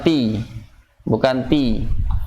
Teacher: Kalau ti jahar sifatnya. Ya, jadi tertahan, udaranya tertahan.